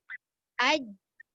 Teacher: Aj itu tahan udara dan tahan suara. Je itu lepaskan lantunan. Jadi bila saya combinekan aj, barulah dia jadi tahan udara, tahan suara dan dia ada qalqalah.